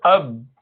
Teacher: So whenever you pronounce an inactive letter in any language, the two opposite surfaces strike, they just meet. So ab, so two lips join together, ab. So the qalqala is when you, after causing these two surfaces to meet, you relax them and bring them back to a neutral position with a sound. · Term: Inactive ba